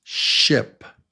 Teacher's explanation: Now, here's the short vowel sound /ɪ/